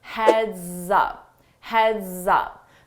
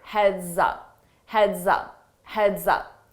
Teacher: notice that S on heads, when I combine it with my vowel sound in up, I use a z, z to combine that together, and it sounds like one word